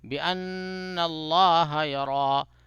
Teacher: اللہ کے لام کو موٹا اور پورا منہ بھر کے تفخیم کے ساتھ ادا کیجیے گا